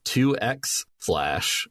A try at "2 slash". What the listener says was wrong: Actually, the X isn't pronounced. It's 2 slash.